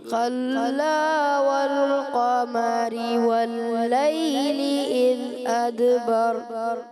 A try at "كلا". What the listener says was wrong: اچھا کلا ایسے موٹا نہ ہو، کاف بھی باریک لام بھی باریک. كلا والقمر والليل إذ أدبر